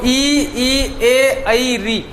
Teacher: तो ई, ए, आई, री, इनका यदि हम उच्चारण करेंगे तो हम खुद प्रैक्टिकली महसूस कर सकते हैं कि जो जीवा का आगे वाला भाग है वो क्रियाशील हो रहा है। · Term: अग्र स्वर